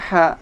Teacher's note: suara hak dikeluarkan di tenggorokan seperti ketika kita mengambil nafas